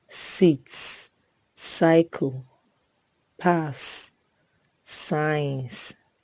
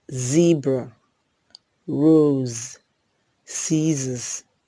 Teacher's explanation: S is a voiceless alveolar fricative, while z is a voiced alveolar fricative. A few examples are s, sit, cycle, pass, science, then z, zebra, rose, scissors.